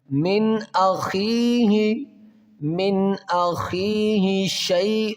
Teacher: یہاں نون پر غنہ نہیں کریں گے بلکہ اظہار ہلکی ہوگا